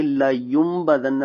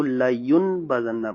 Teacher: تو یہ لایون بزنہ لکھا تو ایسے ہی جائے گا بریل کے اندر، مگر کیا ہوگا کہ جب اس کو پڑھیں گے تو نون ساکن کی آواز کو ہم میم سے بدل ڈالیں گے، یعنی کہ اس کو لایوم بدنہ پڑھیں گے.